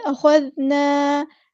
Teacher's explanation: الف مد آ گیا یعنی یہاں پہ ہم مد اصلی کریں گے، ایک الف کے برابر لمبا کریں گے